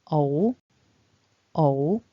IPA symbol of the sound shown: əʊ